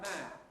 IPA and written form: mæːn (man)